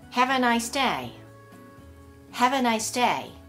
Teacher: 風に音が連結してくっついてしまいます。よく▁I'm▁in▁Tokyo▁という風に無という風にこう口が開いてしまう、▁M▁の後に口が開いてしまう方がいらっしゃいますけれども、これは正しくないです。▁I'm▁で口を閉じたまま▁in▁に移動していってください。▁I'm▁in▁Tokyo▁次は▁Have▁a▁nice▁day▁先ほど私は子音プラス母音の時に音が連結すると言いました。▁Have▁a▁nice▁day▁は▁Have▁の最後がいいですよね。これは母音ですよね。そうするとなんかこれは母音プラス母音のように見えると思いますが、それは違います。なぜかというと▁ Have▁は▁V▁という▁V▁で終わっていて、実際は▁E▁を発音していません。ですので実際のリンキングは▁V▁プラス母音というふうに考えます。